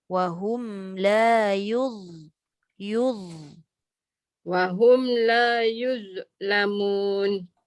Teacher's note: Yang kedua dia ada bunyi z. Dha ni hujung lidah keluarkan dan dia tebal.